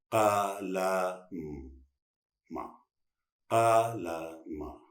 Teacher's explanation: का के लिए जबान लगाइए, का, ला, फर्स्ट सेकेंड आगे के दोनों दांतों के पीछे लेके, का, ला। मां के लिए दोनों होठ बंद हो जाएंगे